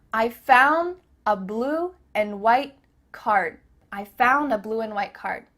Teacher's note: the word and is being reduced just cut off that final d sound